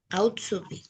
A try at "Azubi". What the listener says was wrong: না, আউটসুবি না, আতসুবি। ঠিক আছে, আজুবি বলবেন না কেউ, এটাকে হচ্ছে আতসুবি, এইভাবে উচ্চারণ করো। ইয়েস, আতসুবি।